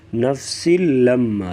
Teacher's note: نفسل یہاں پر غنہ نہیں کریں گے، لام اور را میں ادغام ہوگا یعنی غنہ نہیں ہوگا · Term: ادغام بلا غنہ